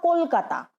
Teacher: বর্ণের শেষে অ এর উচ্চারণটা কিন্তু লুপ্ত থাকে, মানে খুব ভালো সেটা বোঝা যায় না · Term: লুপ্ত অ